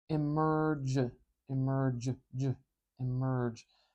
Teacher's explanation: we call it the nurse vowel because that R sound is in the middle of nurse